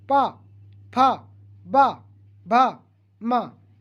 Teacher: इनका उच्चारण स्थान ओष्ठ है फ्रेंड्स,